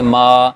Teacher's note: ٹھیک ہے، تو میم کے اوپر کھڑا زبر ہے، تو کھڑا زبر پھر الف کے قائم مقام ہے، الف کے برابر ہے. ہم اس کو 2 حرکت کے برابر لمبا کریں گے، ما. ٹھیک ہے، اور ہم زبر کے اندر منہ کو کھولتے ہیں، آ کی آواز نکالتے ہیں.